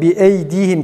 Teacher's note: Bir de bi eydihim kelimesinde hemze boğazın kapanıp açılmasıyla e sesinin çıkması gerekir